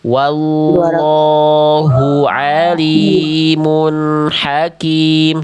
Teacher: Tapi lamnya tetap dua harokat, jangan kepanjangan. Lam pada lafaz Allahnya tetap dua harokat.